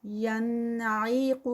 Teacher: ین پہ جو ہے وہ اظہار ہو رہا ہے کیونکہ نون ساکنہ اور اس کے بعد حروف حلقی ہے